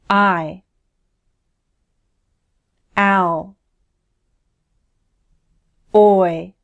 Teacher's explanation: They each use two symbols because they represent a gliding from one vowel sound to another. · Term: diphthongs